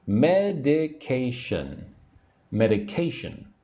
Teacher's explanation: The third syllable needs to be emphasized.